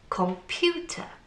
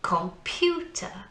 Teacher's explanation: So pew is the strong sound. So we say it's the stressed syllable.